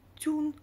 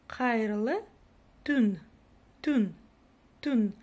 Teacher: буква «ü», это нечто среднее по мягкости между буквой «у» обыкновенной и буквой «ю», которая стоит после согласной